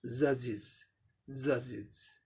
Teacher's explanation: स हो या ज हो या च हो, इस सब में इज होगा, एपोस्ट्रोफी का उच्चारण इज होगा। यहाँ ज साउंड है, इसीलिए एपोस्ट्रोफी का उच्चारण इज हुआ, जजिज, जजिज।